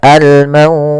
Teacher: Yaitu mad lin yang panjangnya adalah kita boleh panjangkan 2 harokat, boleh 4 harokat, dan boleh pula 6 harokat.